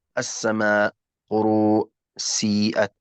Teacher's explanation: المد الواجب المتصل يا كرام في رواية حفص عن عاصم مقداره 4 أو 5 حركات، لا نقول 4 إلى 5 يعني يكون 4 ونصف هكذا، لا، إما 4 حركات أو 5 حركات.